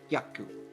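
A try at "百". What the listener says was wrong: It's not yaku, it's hyaku. So you have HYA. Yeah, hyaku. You want to make sure you get that H in there, or else it's not quite right.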